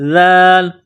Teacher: زبان کا سرہ تھوڑا سا باہر نکالیں گے ذال کو پڑھتے وقت